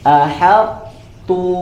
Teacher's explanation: Jadi ahad menyisakan huruf tebal, tetap istafkhimnya disempurnakan, kemudian barulah ke huruf ta. Ahad tu, ya, seperti itu.